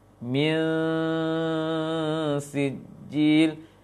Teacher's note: Min sijil ini nun tidak jelas, samar nunnya, diarahkan ke sin